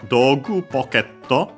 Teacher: the accent is, instead of like in English pocket, it's on the ke